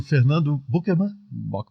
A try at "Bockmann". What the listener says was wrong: Só faltou o acento. Não tem acento, mas é a vogal aberta.